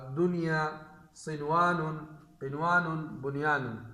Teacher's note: غنہ کیے بغیر اس کو صرف ظاہر کر کے پڑھیں گے، غنہ اس میں نہیں کریں گے۔